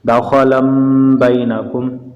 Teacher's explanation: دو زبر کی تنوین کے بعد با آ گیا ہے، اس لیے نون کی آواز کو میم سے بدلیں گے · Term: اقلاب